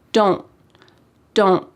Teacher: In American English, oftentimes a T at the end of words will be cut off. We call this a stopped T because your mouth is making that shape.